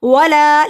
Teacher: ولا لا کو لمبا کیا، الف سے پہلے زبر ہے، حروف مد ایک الف کے برابر لمبا ہوگا